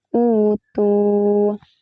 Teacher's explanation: Madal dari penggantian huruf hamzah mati dengan huruf alif, ya atau wau. Cara bacanya dipanjangkan menjadi dua harakat